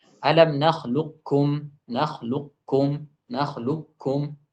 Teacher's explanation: tanpa ada qalqalah, kemudian setelahnya ada kaf yang bertasdid yang tipis.